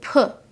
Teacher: you shouldn't be able to feel very much vibration in your throat most of the is happening with your mouth or the letter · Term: unvoiced sounds